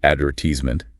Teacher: Ame tends to stress the third syllable.